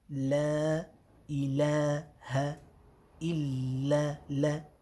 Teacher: all of the lams are going to be empty mouth, nice and light, nice and smiley